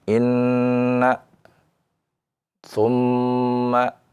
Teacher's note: Dikecualikan pada dua huruf, yaitu nun dan mim, ya, yang bertasydid karena suara gunnah, jadi tidak perlu dinaberkan karena suaranya gunnah